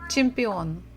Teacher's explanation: so we stress the final syllable